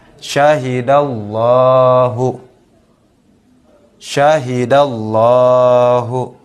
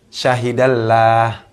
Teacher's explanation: Dhammah bertemu dengan lam yang ada dalam lafaz Allah. Masih banyak sering kita temukan mitra JC cara membaca lam tebal ini dibaca tipis.